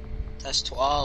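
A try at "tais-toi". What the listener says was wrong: No, not tas toi. It's te toi. The S is silent. Remember, in French, some letters can be silent when you say it.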